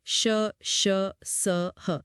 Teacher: जब हम श, श, स या ह बोलते हैं तो हवा के निकलने का रास्ता इतना संकरा हो जाता है कि हवा मुंह के अंदर रगड़ खाकर फ्रिक्शन के साथ बाहर निकलती है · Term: ऊष्म व्यंजन